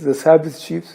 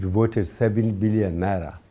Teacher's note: he likes to replace the letter V with the letter B sound